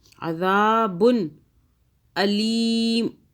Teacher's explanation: ذال کو کھینچ رہے ہیں کیونکہ اس کے آگے الف آ رہا ہے